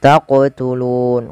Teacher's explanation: qof wajib dipantulkan karena ia ada bacaan qalqalah